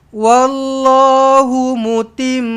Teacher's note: Dengungkan betul-betul. Mim sabdu ni wajibul ghunnah dua harakat